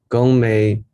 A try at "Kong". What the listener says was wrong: There's no G. Kong.